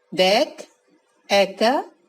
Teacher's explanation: এ ধ্বনির বিবৃত উচ্চারণ ইংরেজি ক্যাট ও ব্যাটের মতো